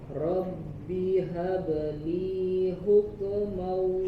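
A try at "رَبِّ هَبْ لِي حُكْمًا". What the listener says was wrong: Huk, ya, tidak dipantulkan, jangan hukmau, hukmau, tapi cukup di hams saja. Di hams keluarkan angin sedikit. Hukmau, hukmau. Ada tambahan gunnah di situ.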